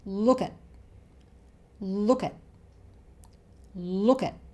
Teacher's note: 'at' is shortened to 'uht', the schwa sound again